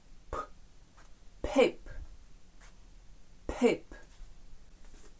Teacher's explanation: ми кажемо з придиханням. Видихуємо повітря. Так само премикнути разом губи і видихнути повітря.